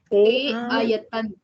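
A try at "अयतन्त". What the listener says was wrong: Ayatanta. See, yatate is atmanepadi. So ayatata is atmane ekavachana. So it is not ayatan, ayatanta. So ta will come in there. Ayatanta.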